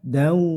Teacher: Langsung ke huruf wawu dan didengungkan sekitar 3 harokat atau 1,5 alif. Dau, nah, dengung. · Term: idgham bi gunah